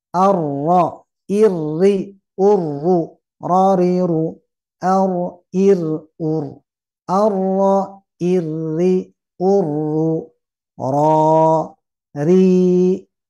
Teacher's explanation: ada sifat yang disebut dengan takrir mengulang dan mengulangnya sekali saja jadi tidak berkali-kali